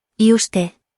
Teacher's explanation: the first word is pronounced E and the U is making an oo sound. So the second word is pronounced usted.